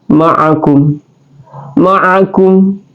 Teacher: ishar syafawi dibaca jelas terang tanpa dengung langsung ya tanpa dengungum la adalah dia sebagai khatul lisan atau